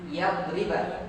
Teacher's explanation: Nunnya ini tidak dibaca, tapi langsung dimasukkan ke dalam kepada huruf berikutnya, langsung masuk huruf ya. Seakan-akan ini pakai tasdid, seakan-akan, tapi tidak. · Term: idgham